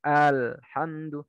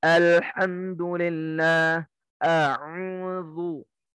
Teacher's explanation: kalau yang Syam dan Yaman baca hamzanya itu dengan powernya kuat